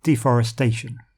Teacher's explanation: The pronunciation pattern of this word actually matches environmental with the stress on the penultimate syllable